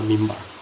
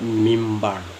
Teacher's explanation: Mimbar itu kan tulisnya MINBAR, tetapi dibacanya ada bunyi M di dalam